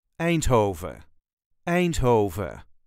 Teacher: All the letters will be pronounced, although, and as with many Dutch words, you can drop the N at the end if you want.